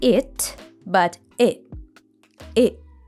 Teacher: The word it isn't pronounced with a true T sound in American English. It gets cut off at the back of the throat and becomes what's called a glottal T.